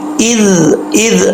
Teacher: زبان کی نوک اوپر والے دانتوں کے کنارے سے لگے گی تو یہ زال پڑھا جائے گا